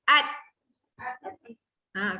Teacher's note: Huruf dal tu memang ada bunyi de dia. Kita panggil dia lantunan.